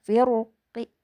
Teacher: Qofnya itu dibaca ki tapi sepertiga harokat. Jadi suaranya kecil ya. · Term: raum